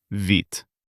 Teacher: >> В before е becomes soft, ви. The letter д at the end is devoiced and turns into т. It turns out вит.